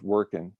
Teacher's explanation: is a midwesterner so with chris's permission i use the ing and i abbreviate it to i n